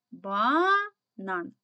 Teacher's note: наголос падає на другу а тому другий склад і є наголошеним тепер робимо аналіз кожного звука звук Б приголосний твердий позначаємо однією